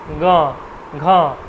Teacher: বের হল গ ঘতে কিন্তু অতটা আসছে না গ এটা কিন্তু একটুখানি শ্বাস কিন্তু আটকে যাচ্ছে পথটাকে রুদ্ধ করে দিচ্ছে আবার ঠেলে সে বার হয়ে আসছে এজন্য এটাকে ঘোষ বর্ণ বলছে আর অঘোষটা হচ্ছে তার বিপরীত প্রথম